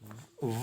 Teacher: ऊपर के दांत और निचला होठ व बोलेंगे व खुला रहेगा पूरा होठ मिलेगा नहीं व तो निचला होठ लगेगा दांतों में ऊपरी दांतों में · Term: दं तोष